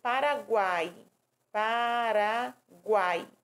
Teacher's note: Já o tritongo é o mais fácil de se localizar, porque é o encontro de três vogais pronunciados em uma mesma sílaba